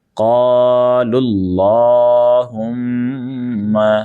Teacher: لام کو لام سے ملانا ہے آپ کو، اور لام اس کو بھی آپ کو موٹا پڑھنا ہے۔ اس کے بعد میں میم پر آپ کو غنہ کرنا ہے، کیونکہ میم کا بھی قاعدہ ہے کہ میم ساکن ہمیشہ، میم پر جب مشدد یعنی تشدید لگی ہوتی ہے تو ہمیشہ غنہ ہوتا ہے، ٹھیک ہے۔